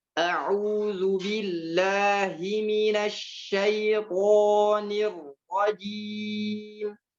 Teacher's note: Ya, sering banyak kesalahan di ta'awudz, ya, memanjangkan a-nya. Misalnya a'udzu bi a-nya jangan panjang, ya.